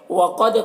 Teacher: हु में उल्टा पेश है, ये भी वाव मद्दा की तरह है. वक़द क़ाफ को पुर पढ़ना है, दाल में कलकला होगा